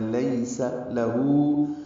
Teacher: یا لین ہے، لیسا نہیں پڑھنا، معروف طریقے سے پڑھنا ہے، لیس لہو، ہو کو لمبا کرنا ہے، 2 حرکات